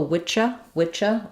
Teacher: some dialects of English will do a Witcher Witcher with a CH